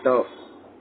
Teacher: जिह्वा का निचला हिस्सा हमारे तालु को लगता है, जो कहलाता है मूर्धा।